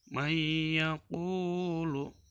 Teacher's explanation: Idgham bigunah yaitu idgham yang memakai gunah atau dengung ke hidung.